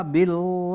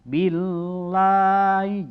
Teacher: ketika huruf sebelumnya dikasroh maka lafazh Allah disini dibacanya tipis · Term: lam jalalah